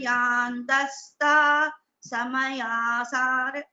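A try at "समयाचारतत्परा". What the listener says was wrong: Samayachara tatpara. There is a chakara there. Samayachara tatpara.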